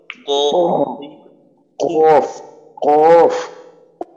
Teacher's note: জিহ্বার গোড়া তার বরাবর উপরে তালুর সঙ্গে লাগাইয়া উচ্চারিত হয় কফ